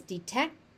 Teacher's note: Sometimes you will hear it pronounced as detect because the final T is dropped.